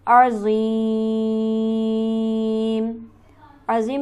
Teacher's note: अज़ीम पर हमारे पास मद्दे आरिज़ मौजूद है लिहाजा इसे हम खींचेंगे 4 अलिफ के बराबर